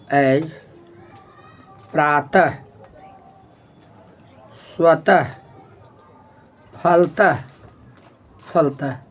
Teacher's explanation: विसर्ग का उच्चारण ह होता है